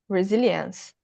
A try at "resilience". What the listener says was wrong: Just pay attention on not saying he, like my name, re.